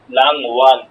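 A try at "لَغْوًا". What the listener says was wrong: গইন দিয়া বলে, উচ্চারণটা গইনে হবে তো, নুন না। লাগ ওয়ান, লাগ ওয়ান, লাগ ওয়ান।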